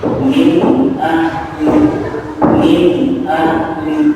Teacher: Karena huruf-huruf idgham di sini makhrajnya adalah dari tenggorokan. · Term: idgham haqi